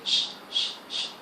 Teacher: on peut dire que les deux phonèmes sont fricatifs et post-alvéolaires. Bon, du point de vue du point d'articulation, c'est post-alvéolaire, et du point de vue du mode d'articulation, sont fricatives. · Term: sourd